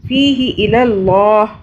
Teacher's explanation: اللہ کو موٹا پڑھیں گے، اللہ سے پہلے جو ہے زبر آ رہا ہے